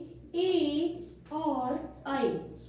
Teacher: ए देतौ कंठ तालु, ए देतौ, ए देतौ, ए देतौ कंठ तालु, कंठ तालु, यानी ए और आई, ए और आई का उच्चारण कहाँ से होता है? कंठ और तालु से, यानी इन वर्णों का उच्चारण 2 स्थानों से होता है, 2 स्थानों से बोले जाते हैं ए और आई।